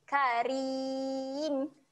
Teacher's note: huruf ra ni dia baca dengan ro yang nipis senyum saja